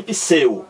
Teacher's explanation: Parece que existe aqui um I entre o P e o S.